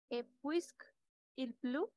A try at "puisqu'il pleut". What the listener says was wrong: Attention, une fois encore. Puisque accepte l'élision. Donc, on va prononcer puisqu'il. Puisqu'il pleut. Puisqu'il pleut. Puisqu'il pleut.